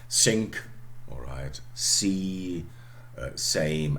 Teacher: alveolar because you put your tongue tip exactly the same place where you would produce t or d. Okay, and just don't close. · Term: alveolar fricatives